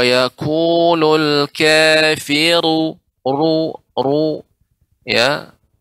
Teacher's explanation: Pada kata kafiru, ketika diberi harokat, maka dibaca tebal. Menjadi tebal karena ro yang berharokat dhammah tebal.